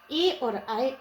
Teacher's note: कंठ से और तालु से दो जगह से उच्चारित होने वाले उच्चारण स्थान है हमारे ए और ऐ। इसका सूत्र है ए दो तो कंठ तालु।